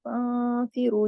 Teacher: یہاں پہ نون ساکن کے بعد فا آ رہا ہے نا، تو یہاں پہ ہم نے اخفا کیا ہے. اخفا حقیقی، غنہ کاملہ سیکنڈ لیول کا غنہ ہے.